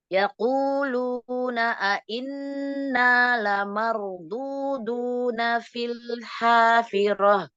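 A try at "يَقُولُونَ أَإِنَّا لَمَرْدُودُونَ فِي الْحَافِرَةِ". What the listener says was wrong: Ya, ahsanti.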